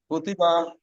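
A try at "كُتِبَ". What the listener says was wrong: আচ্ছা, মাশাআল্লাহ।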